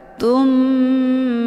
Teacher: dimasukkan ke dalam huruf mim dengan cara ditekan kemudian ditahan lebih kurang 2 kali ketukan. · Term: ghunnah musyaddadah